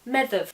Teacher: the DH sound in medieval Irish would be a th, and the BH would be a v